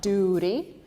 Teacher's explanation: In America, we replace T with an R